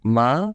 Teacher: the second tone we will be asking a question as in really